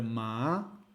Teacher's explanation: pronunciamos más con un tono ascendente